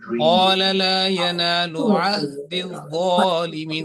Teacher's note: And otherwise you have to work on this ayn and ha, because ayn is coming from the middle of throat and ha from the bottom of throat